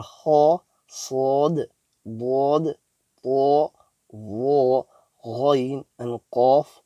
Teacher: These full mouth letters are pronounced by lifting the back end of our tongue towards the upper palate